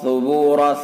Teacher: سا کو نرمی کے ساتھ ادا کریں گے، بالکل زبان کی نوک اور ثنا الیاء کا کنارہ، ثبورا سیٹی کی آواز نہیں ہونی چاہیے، را پر پڑا جائے گا چونکہ متحرک اور زبر ہے۔